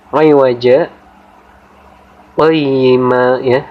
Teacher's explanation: berhenti sejenak pada lafaz iwaja tanpa mengambil nafas selama 1 alif atau 2 harokat atau 2 ketukan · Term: waqaf saktah